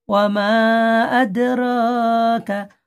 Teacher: রাটা এক আলিফ টান হবে